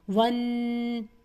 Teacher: یہاں پہ میں نے غنہ کیا نون مشدد کی وجہ سے اور 2 کاؤنٹ کے ساتھ کیا